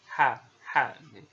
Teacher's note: Mirip huruf H tapi dia keluarnya dari tengah-tengah kerongkongan.